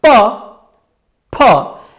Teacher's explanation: प के उच्चारण में बहुत स्वल्प मात्रा में प्राणवायु, जिसको हम हवा कहते हैं, वो बाहर निकल रही है, जिसको हाथ बहुत कम स्पर्श करती है, और फ के उच्चारण में अधिक मात्रा में निकलती है